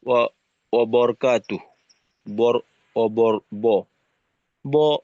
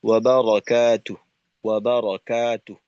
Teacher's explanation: আরবি উচ্চারণ ব না, বা জবরের উচ্চারণ হবে ওয়া বারাকাতু